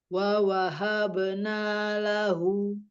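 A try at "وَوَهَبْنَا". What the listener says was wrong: Ulangi, wa wahabna, wawanya pendek semua.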